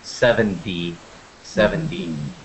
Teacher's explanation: 70, 17. In 70, a lot of people pronounce it almost like there's the letter D in that word. 7D, 70. But it's actually written with a T.